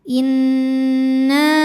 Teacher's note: Nunnya gunnah musyaddadah karena nun bertasydid. Cara bacanya berdengung, tahan dengungannya kurang lebih 2 harokat.